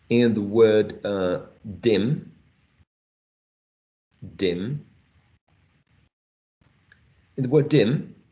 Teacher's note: In this case, we're not using the diacritic mark that looks like an H, because D, it is plosive or stop, but it's voiced. It's not voiceless.